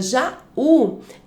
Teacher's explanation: Já a palavra Jaú também é uma oxítona, porque a última sílaba é mais forte, mas ela tem aí um hiato, eu separo a sílaba Já e U, então ela é acentuada pela regra dos hiatos.